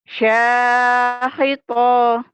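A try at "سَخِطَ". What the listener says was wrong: sakhita gitu. Ki-nya pendek. Sakhita diulang.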